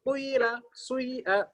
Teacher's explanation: Itu baca dhammahnya sepertiga, iya-nya 2/3